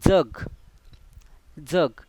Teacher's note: जिभेचा भाग दाताच्या मागील भागास लागतो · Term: दंततालव्य